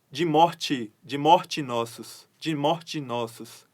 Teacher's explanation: quando existe 2 vogais e uma delas ou as duas forem átonas, existe essa elisão, essa junção.